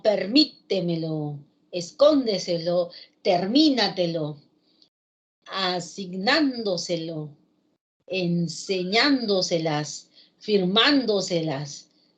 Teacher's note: Son palabras que llevan la intensidad o fuerza de voz en la tras antepenúltima sílaba. ¿Sí? Son palabras sobresdrújulas y también por regla todas se tildan.